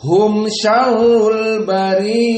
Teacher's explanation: maka di sini dibaca dalam keadaan mad al-isba', dibaca 6